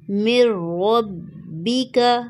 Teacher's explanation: یہاں پر ادغام تو ہوگا لیکن غنہ نہیں ہوگا، نون ساکن سائلنٹ ہو جائے گا